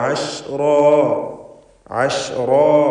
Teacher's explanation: ഐൻ വ്യക്തമായി മഖ്റജിൽ നിന്ന് ഉച്ചരിക്കണം. തൊണ്ടയുടെ മധ്യം